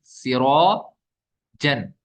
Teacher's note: یہاں پہ الف سے پہلے را پر زبر ہے تو یہ پر حرف ہے، اس لیے الف کو بھی ہم پر پڑھیں گے۔